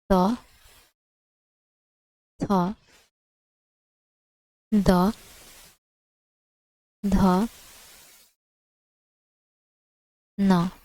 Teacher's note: पहला, तीसरा और पांचवा वर्ण अल्पप्राण तथा दूसरा और चौथा वर्ण महाप्राण ध्वनि में आ जाएगा